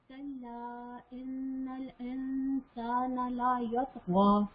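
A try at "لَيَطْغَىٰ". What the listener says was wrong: لا یطغى نہیں، لا یت، لا لمبا ہو گیا وہ، لا یطغى،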